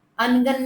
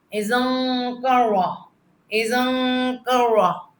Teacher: اخفا غنہ، چھپا ہوا غنہ. ناک میں آواز آئے گی، جسے ہم کہتے ہیں لکھتے ہیں آنگن.